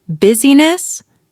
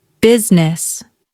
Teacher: The middle vowel disappears